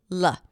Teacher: Now the dark L is created by bringing the tip of the tongue to touch the upper pallet even though it might not always be the case because most of the tension is created in the back of the tongue. But in this case, unlike the R, the sides of the tongue don't touch the sides of the teeth, but it almost feels as if you're putting in the same tension for the dark L and the R.